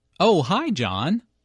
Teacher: notice the rising intonation